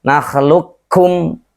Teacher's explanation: idghamnya kamil, itu memasukkannya semua ke huruf kafnya